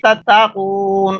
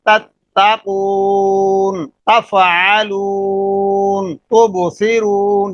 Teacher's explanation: جہاں پڑھیں گے تا بالکل باریک ہوگی اور سامنے آواز آ گی